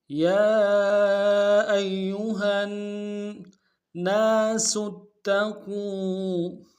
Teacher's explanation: ناس میں نون کے ساتھ الف مد ایک دار میں کھینچیں گے